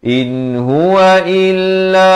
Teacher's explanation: Jangan baca il, baca il. Hamzah pada kasar bunyi i, bukan bunyi e.